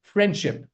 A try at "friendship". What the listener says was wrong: Very nice. Don't say friendship. D sound has to be dropped. The D sound, drop it.